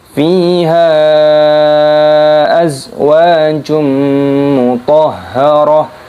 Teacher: Mutahharah di sini haknya dimasukkan ke huruf to-nya, memasukkan ke huruf ha karena ada tanda tasdidnya. Ketika waqaf maka tak marbutah ini berubah menjadi huruf ha.